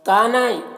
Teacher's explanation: کانا میں الف مدہ ہے، نا میں بھی الف مدہ ہے، دونوں کو ایک الف کے برابر کھینچیں گے